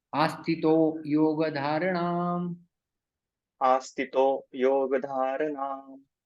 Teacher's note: विसर्ग ओ में परिवर्तित हो जाता है